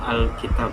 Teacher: Harokat pada akhir kata-kata tersebut juga dihilangkan sehingga ketiga-tiganya itu dibaca Alkitab.